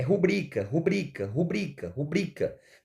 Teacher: vejam que a sílaba mais forte está aqui ó certo na segunda posição